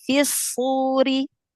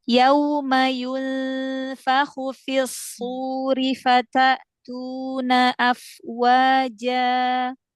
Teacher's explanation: Ya, fisu langsung idgham syamsi.